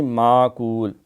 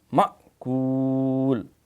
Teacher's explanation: یہ جھٹکا دینا ہے کیونکہ میم حمزہ زبر یہ نہیں، معقول، مأکول، تو یہاں وقف بالاسکان ہے تو یہاں مد بھی کر کے ہم پڑھ سکتے ہیں۔